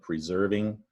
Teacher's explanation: The red is the stressed syllable, persevering, 4-syllable word, preserving. Now that S kind of sounds like a Z